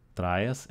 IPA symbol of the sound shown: θ